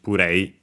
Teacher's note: That only with the additional U, because the P can stay on its own, unlike the N we have seen above. Accented simply on the re, just play, just like in English, puree.